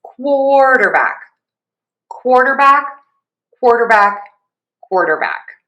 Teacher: Primary stress is on quart. That means that syllable is louder, longer vowel, and higher in pitch. Least stress on the dur. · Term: secondary stress